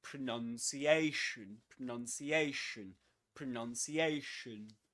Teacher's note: pronunciation is a double-stressed word, which means that there are two accented syllables. The one carrying the main accent is this one, Asian.